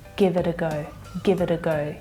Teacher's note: You might even hear that T, that flap T, sounding more like a D there, because naturally in my pronunciation with my accent, it'll reduce to that flap T sound.